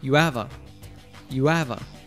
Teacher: Notice that when says, you have a, he doesn't pronounce the H in have, av. The A is just pronounced as a schwa, and all three words link together.